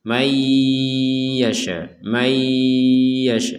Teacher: Kemudian di sini ada nun sukun bertemu ya, kita harus membaca dengan dimasukkan. Masukkan nun ini kepada huruf ya disertai dengan dengungan.